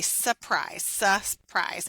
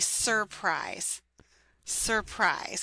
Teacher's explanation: So the word surprise, you actually don't say the first R in it.